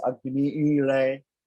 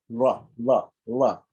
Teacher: It's an L, which is like a cerebral L.